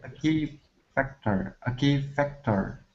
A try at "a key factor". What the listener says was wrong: Yeah, and it's not that emphasized. It's just a key factor.